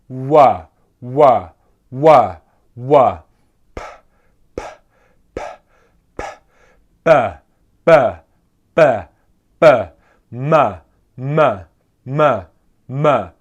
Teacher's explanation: the first three sounds there are called bilabial sounds, where they are consonants that come from the lips actually touching each other